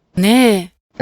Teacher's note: そ ん な 仕 事 は When hitting the particle wa, you may choose to either keep the pitch at the same level and then drop into the next accent phrase, or the particle wa itself may lower into comma intonation. The final particle ne is marked with an accent to denote that the particle starts high and then goes low